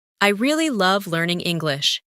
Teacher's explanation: Emphasize really and love.